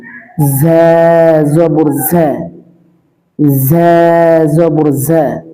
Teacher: ঝাটা রাল এবং জিমের মধ্যবর্তী উচ্চারণ হবে। নরম হবে না, একেবারে শক্ত হবে না। জিহ্বার আগা নিচের 2 দাঁতের পেট ও আগার সাথে লাগিয়ে। ঝা জবর ঝা, ঝা জবর ঝা, মৌমাছির আওয়াজের মতো হবে।